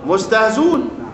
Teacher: وحذف الهمزة بعد نقل حركتها